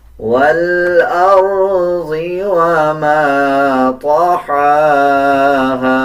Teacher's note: ہا کے اوپر کھڑا زبر ہے، 1 سیکنڈ لمبا کریں گے، اس کو باریک پڑھیں گے